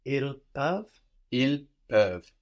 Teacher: we don't pronounce the S on the end